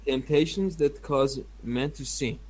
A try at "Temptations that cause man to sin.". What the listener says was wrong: No. Your intonation was not good. Temptations that cause man to sin.